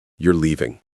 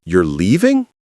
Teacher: Rising intonation, showing surprise.